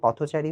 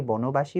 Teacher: অর্থাৎ মাঝের অবর্ণটি ওকারন্ত উচ্চারিত হচ্ছে